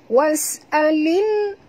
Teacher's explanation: Bunyikan lam yang mati ni dengan terang, tongkatkan lidah ke lelangit ya. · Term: alif lam, qamariyah